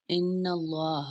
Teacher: حمزہ زیر نون ان، نون زبر لا، لفظ اللہ سے پہلے زبر آ جائے تو لفظ اللہ موٹا پڑا جائے گا